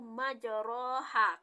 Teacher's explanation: Terakhir yaitu imalah yaitu terdapat pada Quran surat Al-Hud ayat 41 yaitu majroha, karena memiringkan pelafazan pada fathah ke kasrah